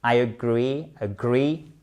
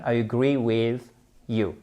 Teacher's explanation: Vous avez votre accentuation sur la seconde syllabe au passage.